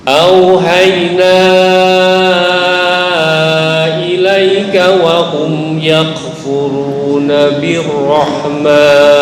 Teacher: wahum mim bertemu ya. Ini idhar syafawi. Nggak boleh dengung.